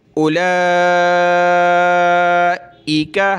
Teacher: اس واو کو نہیں پڑھنا ہوتا، حمزہ کے بعد ڈائریکٹ لام کو پڑھیں گے اور اس کو کھینچیں گے